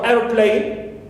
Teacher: air receives the primary stress